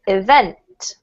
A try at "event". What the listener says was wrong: Yeah, the emphasis is on vent rather than E, okay?